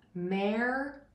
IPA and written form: ˈmɑrɪˌneɪd (marinade)